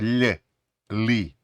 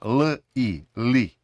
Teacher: голосна не пом'якшує попередню приголосну тому ми не кажемо ль лі а просто л і лі